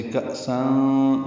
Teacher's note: کأسن میں حمزہ ساکن جھٹکے سے پڑھا جائے گا، روایت حفص میں تنوین کے بعد کاف آنے کی وجہ سے کأساں یہ اخفا ہے، نون کی آواز چھپائیں گے، سان سن کی جگہ سان پڑھیں گے۔